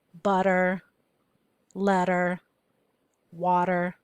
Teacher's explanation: So we've got OI in the middle of the word, and we already have the consonant T, so we wouldn't put a Y in front of it. Now, whenever T is in the middle of a word, oftentimes in American speech, that T becomes a D sound. We call it the flap D.